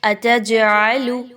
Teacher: قلقلہ ہوگا یہاں پہ، جیم کی آواز کو تھوڑا سا ہلا کے پڑھیں گے · عین کے مخرج کو بہت اچھا واضح رکھنا ہے، اس کو آپ نے حمزہ کی طرح نہیں پڑھنا